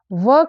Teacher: व का उच्चारण स्थान दंत और ओष्ठ है, अर्थात वकार का उच्चारण इन दोनों स्थानों से सम्मिलित रूप से होता है। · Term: दंतोष्ठ